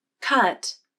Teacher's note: the pitch of the voice glides up and then down